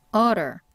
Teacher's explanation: 리을처럼 발음이 됩니다 즉 혀가 입천장을 쭉 건드리세요